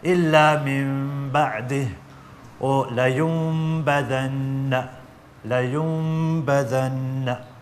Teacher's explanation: So you pronounce the ba and you don't pronounce the an sound of the noon sakin or tanween. It changes to a meme sound. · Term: iqlab